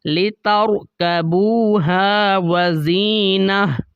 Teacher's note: گول تا کو ہا کے اندر بدل دیا جاتا ہے جب بھی گول تا کے اوپر وقف ہوتا ہے